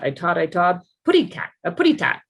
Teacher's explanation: So let's say they use T's for K's and D's for G's. We call that fronting.